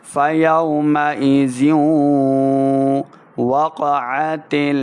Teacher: فَيَوْمَئِذٍ وَقَعَتِ واو زبر واو کو جب پڑھیں گے دونوں ہونٹ گول کرنے ہیں، پھر واو کا مخرج صحیح ادا ہوگا